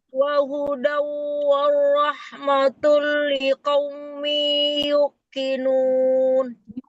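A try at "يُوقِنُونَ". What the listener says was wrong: Panjangkan yuqinun.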